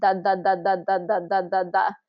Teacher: your tongue is just hitting against the back side of your front teeth and it's going D D D D D D D du